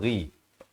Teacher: Ghain makhrajnya di hujung kerongkong.